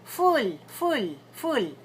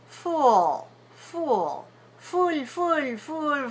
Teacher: it's a final that means after a vowel then that L the L the back of the tongue comes down